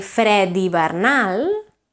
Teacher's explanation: if you say fred hivernal, then it becomes a D because it's followed by a vowel